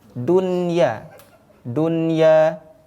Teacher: jikalau kita menjumpai ketika membaca al-quran maka ini tidak perlu diidamkan tidak perlu dibaca ghunah langsung di teruskan saja atau dibaca dengan izhar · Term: izhar mutlaq